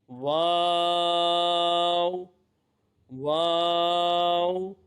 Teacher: किनारे निचले होठ के तर हिस्से से अदा होगा वाव वाव दोनों होठों की गोलाई से अदा होता है · دونوں ہونٹوں کی گلائی سے ادا ہوتا ہے